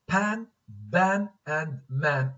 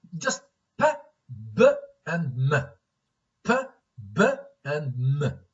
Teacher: Bilabial sounds. These are sounds produced using both upper and lower lips.